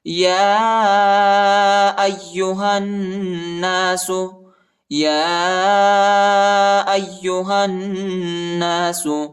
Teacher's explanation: یا پر کڑا زبر اور چھوٹا مد ہے، اس کو تقریباً 2-3 سیکنڈ تک کھینچیں گے اور حمزہ کو یا کے ساتھ ملائیں گے، ٹھیک ہے، اور ہا کو نون کے ساتھ ملائیں گے اور غنہ بھی کریں گے، ٹھیک ہے۔